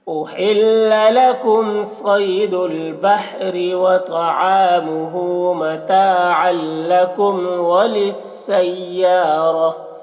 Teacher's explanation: अल में इदगाम ताम हो रहा है, तनवीन को लाम से मिलाकर बगैर गुन्ना के पढ़ेंगे